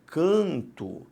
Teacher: na verdade o som é diferente por uma nasalização e não pela entrada de um novo fonema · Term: dígrafo vocálico